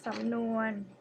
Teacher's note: Okay, which are ส ำ น ว น the first one ส ำ น ว น okay, the first syllable is rising tone ส ำ น ว น mid tone ส ำ น ว น in Thai means idioms.